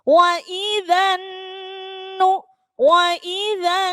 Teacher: alif lam nya tidak dibaca langsung dengung pada huruf nun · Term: alif lam syamsiah